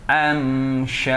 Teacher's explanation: Ketika am, bibir rapat, jangan mendengung. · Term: izhar syafawi